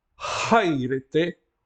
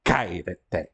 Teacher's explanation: Portanto, isto é uma aspiração, é uma consoante gutural, pronunciada pela gútur, pela garganta, só que é aspirada. A nossa língua não tem este som da gutural aspirada, mas no grego é muito comum.